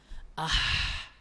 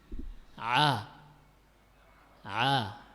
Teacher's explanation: epiglotis ini mundur ke dinding tenggorokan belakang sehingga menghasilkan suara seperti cempreng